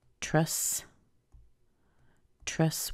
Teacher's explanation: with a little schwa because this is an unstressed syllable